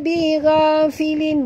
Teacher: di sini gha, ghain, baris atas kena baca tebal, bukan bira filin.